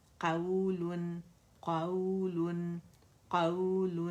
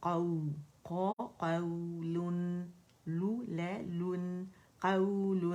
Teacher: ایک کاؤنٹ کے لیے آواز اوپر جائے گی کیونکہ ایک واؤلین ہے